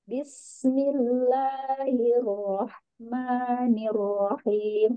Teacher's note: Sin tipis dan ada sifat sopir